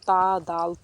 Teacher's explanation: حروف نطعیہ زبان کی نوک اوپر کے دانتوں کی جڑ سے ادا ہوتے ہیں۔